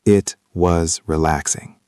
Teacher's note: If you say it was relaxing with a flat voice, it sounds sarcastic, like you hated it.